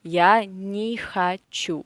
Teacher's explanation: хочу we say а, not о, because it is again unstressed position.